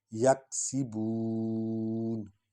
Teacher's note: یک سین سیٹی کی آواز نکلے گی،